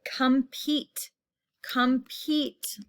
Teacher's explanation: long e sound in the second syllable